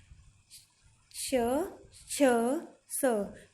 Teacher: इन वर्णों को बोलते समय स्वर तंत्रियां दूर दूर रहती हैं। स्पर्श व्यंजनों में प्रत्येक वर्ग का पहला और दूसरा वर्ण और श, छ, स, ये अघोष व्यंजन है।